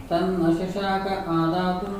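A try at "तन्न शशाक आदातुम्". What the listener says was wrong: We can read it fully instead of breaking it. Tanna shashaka adatum.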